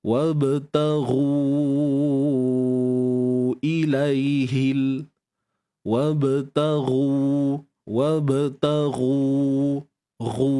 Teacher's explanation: Wabtaghu ru. Muncul je bibir macam biasa. Dan panjangkan 4 atau 5 harakat, mat jaiz munfasil.